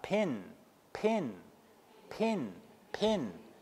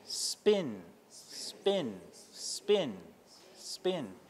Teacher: you never knew you were doing unaspirated consonants this whole time